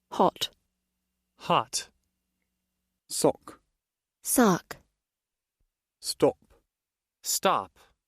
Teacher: first the standard British pronunciation then the standard American pronunciation and notice how the first pronunciation in each sound is more rounded